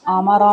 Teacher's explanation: آما را میں را کو موٹا پڑا جائے گا